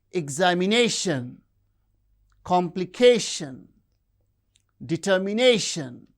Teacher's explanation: have stress on the penultimate syllable, like examination, complication, determination